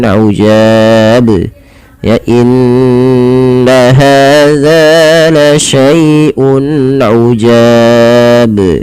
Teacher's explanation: kesalahan di dalam membaca qalqalah ini adalah tidak memantulkan huruf qalqalahnya, yaitu di sini huruf ba. Misalkan ujab, harusnya dipantulkan ujab, ya.